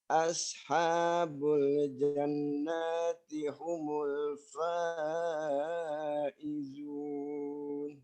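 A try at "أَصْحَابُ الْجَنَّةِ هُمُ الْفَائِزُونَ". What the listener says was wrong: Yang jannati tahan dulu lebih lama nunnya.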